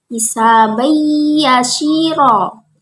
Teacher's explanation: Hisabai yashiro, ro-nya termasuk mat iwat, yaitu menghilangkan suara tanwin dan dibaca panjang karena diwakafkan